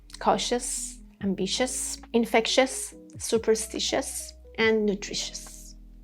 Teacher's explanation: When we have T-I-O-U-S, all of them together sound shus